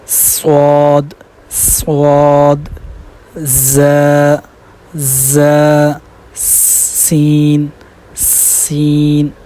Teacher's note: کیونکہ ان میں صفیر والی جو ہے نا وہ صفت پائی جاتی ہے، تو ان کی آواز سیٹی کی طرح نکلنی چاہیے